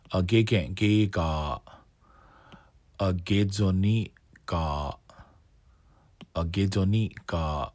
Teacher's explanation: So it's always G-A lengthen and then close your throat for a glottal stop.